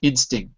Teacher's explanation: if you're speaking quickly we might drop the T but if you speak slowly you need it